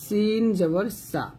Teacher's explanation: সিনটা যখন উচ্চারণ করবেন জিহ্বাটা নিচে দাঁতে লাগিয়ে সিন উচ্চারণ করবেন